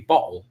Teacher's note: There'd be a glottal stop right in the middle of it to where the T's and the D's are gone.